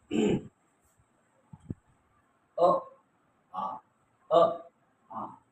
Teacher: तर अ आणि आ हे कंठ आहे, म्हणजे कंठ्य स्वर आहे.